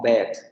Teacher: Anterior semiabierta no labializada. Es la vocal de estas que nosotros podríamos entender como es, las es, que es la que suele aparecer en sílaba acentuada y además como vocal corta.